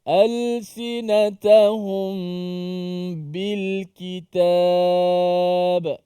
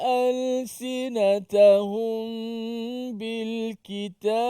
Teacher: Kita membacanya dengan dengung. Mim itu dimatikan dan didengungkan kerana bertemu dengan huruf ba. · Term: ikhfa syafawi